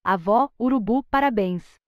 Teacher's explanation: oxítonos São aqueles cuja sílaba tônica é a última